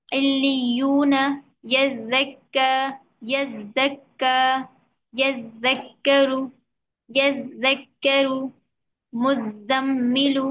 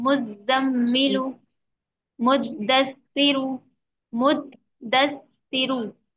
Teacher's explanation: 2 बार तशदीद है तो 2 बार सख्ती करेंगे, डबल तशदीद है ना तो 2 बार सख्ती से अदा करेंगे